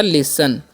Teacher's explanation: एल का ल करना है, आई का उच्चारण हर्षी करेंगे, एस का स, और टी का उच्चारण करना ही नहीं है, एन से न, तो हो गया लिसन।